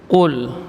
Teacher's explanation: huruf yang keluar dari pangkal lidah menempel pada langit-langit yang lunak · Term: huruf qaf